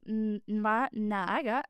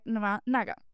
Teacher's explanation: the a in na might be dropped